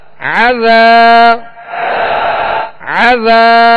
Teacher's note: ذال کو نرمی کے ساتھ ادا کرنا ہے اور ایک الف کی مقدار کھینچیں گے. یہاں الف مدہ ہے.